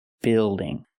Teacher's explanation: Use the short I sound like this is, plus the dark L.